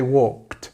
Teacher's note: Again, we don't have the sound of the L. The L is soft, completely silent. We just say walked.